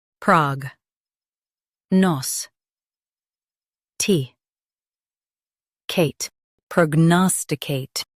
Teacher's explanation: Emphasize nose and soften to Kate.